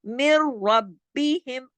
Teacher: रा मोटा पढ़ेंगे जबर की वजह से, और मीम को रा से जोड़ेंगे तशदीद। देखें तशदीद बता रही है ना कि 2 रा है।